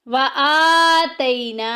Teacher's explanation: آ کے اوپر دیکھیں کھڑی زبر آ گئی، ایک الف کے برابر لمبا کریں گے، اور نا میں دیکھیں الف پیچھے زبر ایک الف کے برابر لمبا کریں گے، حروف مدہ ہو رہا ہے، الف مدہ ہو رہا ہے۔